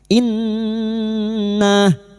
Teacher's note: Kita dengungkan selama 3 harakat gunna musyaddadah. Inna, nah fathah diikuti alif, 2 harokat kita panjangkan.